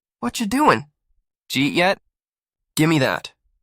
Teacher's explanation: when they talk, everything melts together. It sounds like one long unstoppable soundwave. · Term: connected English